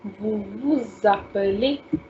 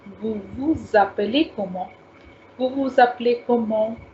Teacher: So I have told you before also, if the first word is ending with a consonant, like here, vous is ending with S and appeler is starting with a vowel, you need to take the liaison, you need to take the sound of Z